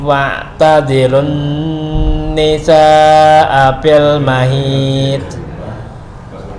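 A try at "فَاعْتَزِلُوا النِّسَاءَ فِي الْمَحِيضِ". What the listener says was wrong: Masih kedengaran pantulan. Tazilun bisa fil mahid.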